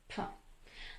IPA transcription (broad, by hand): p